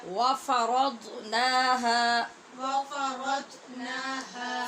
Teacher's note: زبان کی نوک سے نہیں، تکلف سے پڑھنا پڑے گا، اور پیچھے والی 5 داڑھوں کو اوپر اسی حصے میں زبان کی کروٹ کے ساتھ لگانا ہوگا